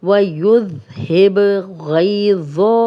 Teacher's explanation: آگے با پہ جزم ہے تو کلکلا والا حرف ہے، کلکلا والا حرف جو ہے ہم ہلا کے پڑھیں گے